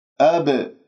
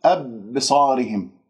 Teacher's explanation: أب باء مقلقلة في وسط الكلام، قلقلة صغرى، والخطأ أن تقول أبصارهم بمجرد أن تقف ولو جزء من الثانية على المخرج، مخرج الباء هنا صار مسك ولم يحدث عندي القلقلة، إذن أنت تضرب المخرج وتهرب، بمعنى الاضطراب في المخرج.